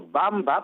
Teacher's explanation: Pero Bamba, como tú bien has dicho, Bamba, porque se escribe con W, digamos la pronunciación es oclusiva bilabial sonora